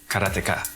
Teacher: In Japanese, there's no stress on any syllable, so it would be Karateka, something like that.